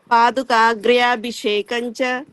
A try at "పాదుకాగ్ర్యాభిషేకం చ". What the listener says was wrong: బాగుందమ్మా, ఉత్తు బాగా చెప్పావు.